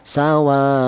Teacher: Ini wa mad thabi'i berjumpa dengan hamzah berada di satu kalimah itu dinamakan mad wajib muttasil. Kalau sudah menjadi mad wajib muttasil itu panjangnya 2 alif setengah atau lima harakat atau lima ketukan.